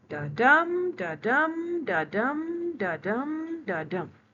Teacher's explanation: That is iambic pentameter. The iambs, unstressed and stressed syllable, two-beat combination, like a heartbeat. And when we use pentameter, it means 5 of the iambs, 5 of the two-beat, 1, 2, 3, 4, 5.